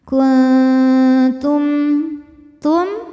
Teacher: Sebab nun sukun menghadapi huruf ta, maka bunyi nun sukunnya dibunyikan samar-samar, siap-siap menuju huruf ta disertai bunyi dengung. Ya, samar lebih besar ya, jadi dengungannya sedikit. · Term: ikhfa aqrab